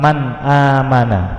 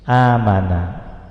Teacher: nun sukun bertemu dengan alif pada lafadz man amana, maka nun sukun dibaca jelas, man ya, nun sukunnya jelas, amana. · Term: izhar